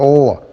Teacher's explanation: When you say l, the air flows over the two sides of the tongue, on the right and on the left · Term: lateral approximant